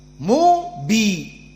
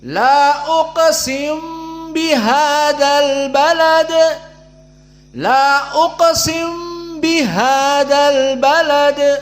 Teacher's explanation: Si mim dibaca sedikit masuk kepada ba. Ba-nya musyaddadah. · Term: idgham al-kabir